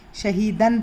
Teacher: حلق کا وہ حصہ جو سینے کی طرف ہے، وہاں سے آنے والا ہا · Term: سینے والا ہا